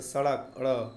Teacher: जिनके उच्चारण में जिह्वा की नोक झटके से नीचे गिरती है तो वह उत्क्षिप्त वर्ण या फेंका हुआ ध्वनि कहलाता है।